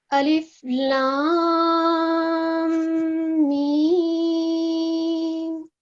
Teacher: اس میں یہ جو مد کبیر ہے اس کو 6 سیکنڈ کے لیے لمبا کرنا ہے, اس کے بعد میم پر جو ہے وہ 2 سیکنڈ کے لیے غنہ کرنا ہے, اور پھر اس کے بعد میم کو جو ہے وہ 6 سیکنڈ کے لیے پرولونگ کرنا ہے.